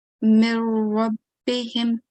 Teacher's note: So it's almost as if we are not pronouncing the noon. Okay, it can't be heard.